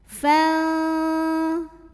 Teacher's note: Di depan fa fathah ada alif, tapi ini bukan pemanjang, bukan mad, melainkan ini adalah hamzah wasal. Hamzah wasal jika di tengah tidak perlu dibaca, artinya fa-nya pendek